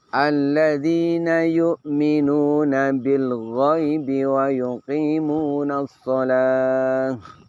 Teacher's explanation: pada lafaz bil ghaibi setelah ba kasroh di situ ada hamzah wasol, namun hamzah wasolnya tidak lagi dibaca karena dia berada di tengah, sudah tidak dibutuhkan lagi secara pengucapan.